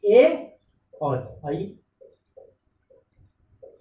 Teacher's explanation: ए और आई, इनका उच्चारण स्थान कंठ तालु होगा। सिंपल फार्मूला, ए दैतो यानी दोनों ए का उच्चारण स्थान कंठ तालु होगा।